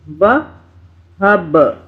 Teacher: با پہ قلقلہ کرنا ہے، چٹکے سے پڑھنا ہے